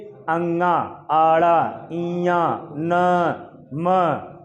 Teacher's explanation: उच्चारण इसका नाक और मुख की सहायता से किया जा रहा है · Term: अनुनासिक या पंचमा अक्षर